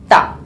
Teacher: Ta pula, hujung lidah dan gigi atas